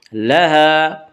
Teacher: الف مدہ کو ایک الف کے برابر کھینچ کر پڑھیں گے